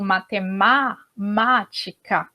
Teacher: percebam que o A é aberto, então a gente vai ter o acento agudo, tá?